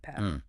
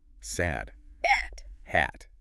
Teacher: that A sound path. Long A. But sad. That A is short.